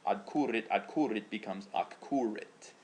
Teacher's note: Okay, this is called assimilation. It's where the consonant blends together with the next consonant, because if you were to say adcurit kind of quickly, adcurit with the D, it begins to blend in with the C sound.